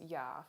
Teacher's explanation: this sound is a voiced palatal approximant and the ipa symbol for it is the letter j now